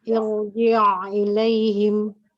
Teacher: Hamzahnya harus pangkal tenggorokan ya, jangan sampai tasil juga.